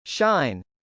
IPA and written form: ʃˈaɪn (shine)